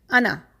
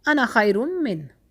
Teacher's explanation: وصل کرتے ہوئے یعنی ملا کر پڑھتے ہوئے انا خیر من، بس 1 حرکہ دینی ہے